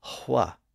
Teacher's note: it was still common for people to pronounce an H sound before a W as hwa